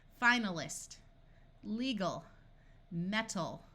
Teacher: we can add suffixes and the a retains the muffled schwa sound